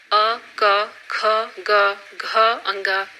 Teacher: अ, क, ख, ग, घ, अंग कंठ ध्वनियां हैं